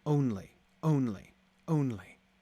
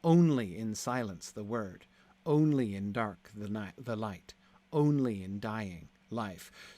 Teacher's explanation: Only is not unstressed, stressed. Only with the stress comes in the first syllable, right? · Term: trochaic